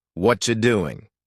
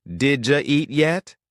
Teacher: The sounds blend together so smoothly that it almost sounds like one long word instead of 4 separate words. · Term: connected speech